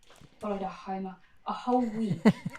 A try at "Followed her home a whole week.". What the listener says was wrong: Yeah, but I hear a hammer.